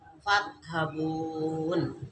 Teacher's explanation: Nah, di sini roknya mati, sebelumnya berfathah jadi tebal. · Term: tafhim